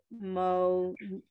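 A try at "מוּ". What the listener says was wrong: Not Mo. Look at it. The dot's in the middle.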